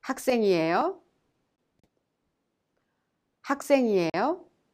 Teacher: When you say에요, you must raise the tone at the end of the sentence to make it sound like a question